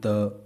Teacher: आपकी जीभ देखिए दांतों को टच हो रही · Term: दंतव्य